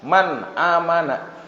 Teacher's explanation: ketika Nun atau tanwin bertemu dengan huruf Izhar maka bunyi nunnya jelas Man amana gitu Man amana Gitu jelas kalau ikhfa samar Nah